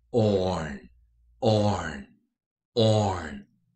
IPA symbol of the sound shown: ɔrn